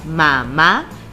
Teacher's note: su sílaba tónica se escucha en la última ma y como termina en vocal y está en la última sílaba, es aguda.